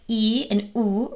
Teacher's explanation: High vowels like E and U require the tongue to be higher in the mouth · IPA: /i/ and /u/